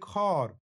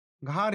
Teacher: এখানে প্রাচীন বাংলায় হয়েছে তাই ঘাড় হিসাবে। এখানে ঘয়ের সঙ্গে যুক্ত অ স্বরটি শাসাঘাতের প্রভাবে দীর্ঘ আতে পরিণত হয়েছে।